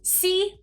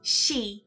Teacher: For s and e, instead of saying si, many Japanese speakers might say she.